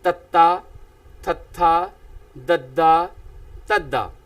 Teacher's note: ਤਾਂ ਇਸ ਤਰ੍ਹਾਂ ਨਾਲ ਪਿਆਰੇ ਵਿਦਿਆਰਥੀਓ ਤ ਵਰਗ ਵਾਲੀ ਸਤਰ ਜੋ ਕਿ ਜੀਭ ਦੀ ਨੋਕ ਵਾਲਾ ਹਿੱਸਾ ਦੰਦਾਂ ਦੇ ਉੱਪਰਲੇ ਦੰਦਾਂ ਦੇ ਅੰਦਰਲੇ ਪਾਸੋਂ ਜੀਭ ਜਿਹੜੀ ਹੈ ਉੱਪਰਲੇ ਦੰਦਾਂ ਦੇ ਅੰਦਰਲੇ ਪਾਸੋਂ ਜਿਹੜੀ ਹੈ ਨੋਕ ਛੂੰਹਦੀ ਹੈ ਤਾਂ ਮੂੰਹ ਦੇ ਵਿੱਚੋਂ ਇੱਕੋ ਦਮ ਜਿਹੜੀ ਹੈ ਵਿਅੰਜਨ ਉਚਾਰਨ ਕੀਤੇ ਜਾਂਦੇ ਹੈ ਤੱਤਾ, ਥੱਥਾ, ਦੱਦਾ, ਤੱਦਾ। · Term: ਦੰਤੀ ਵਿਅੰਜਨ